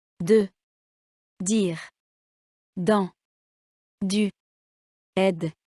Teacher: D, comme dans dire, orale et sonore. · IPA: [d]